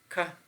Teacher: For example, when we say k, you know, the air which is flowing from the lungs is stopped somewhere, specifically in the back part of our mouth. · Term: obstruent